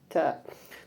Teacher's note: Ta itu termasuk makhraj asnani latwi, yaitu gigi yang hampir bersentuhan dengan gusi.